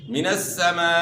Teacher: یہاں مد متصل ہے، یعنی مد واجب ہے، 3 سے 4 الف کے مقدار کے برابر آپ نے کھینچنا ہے